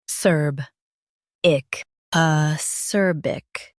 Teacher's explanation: Focus on serb and soften ick.